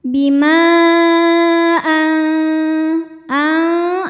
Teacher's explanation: maka mim dipanjangkan boleh empat boleh lima harakat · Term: Mad Jaiz munfasil